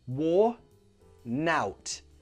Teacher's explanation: you link those together wor-nout The N joins the next word · The N joins the next word, worn out.